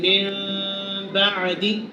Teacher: نون ساکن اور تنوین کو میم سے بدل کر اخفا کرنا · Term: اقلاب